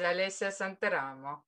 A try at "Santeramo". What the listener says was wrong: Oh, you see, the accent is wrong. It's Santeramo. But it's a common, I mean, also in Italians are pronouncing it with accent on another, so don't worry.